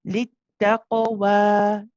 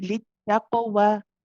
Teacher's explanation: When you do say the wa, because of the mad alif, we do prolong this for 2 counts.